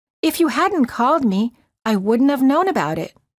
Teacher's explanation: the T of the word not disappears